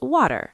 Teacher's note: T in the middle of words becomes a soft D.